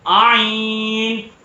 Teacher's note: آئین جو ہے وہ حلق کے بیچ کے حصے سے ادا ہوتا ہے